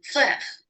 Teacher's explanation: French speakers used to trill their R's with the tongue, but it moved to the uvula at the back of the throat, as in frère.